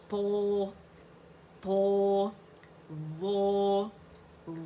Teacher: تو اس ایکو کو آپ کس طرح شو کریں گے موٹائی کے ساتھ تھو آپ کی زبان لپٹ جائے گی تالو کے ساتھ